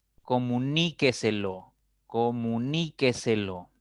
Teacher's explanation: la mayor fuerza la mayor intensidad está en la cuarta sílaba contando siempre de derecha a izquierda y por lo tanto será una palabra sobre esdrújula y la